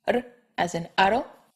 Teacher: the tapped R, R as in aro.